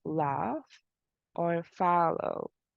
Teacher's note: a voiced alveolar lateral liquid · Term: l sound